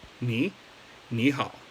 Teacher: just make sure that the knee is pronounced a second tone